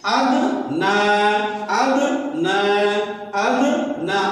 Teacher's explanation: اد میں قلقلہ ہوگا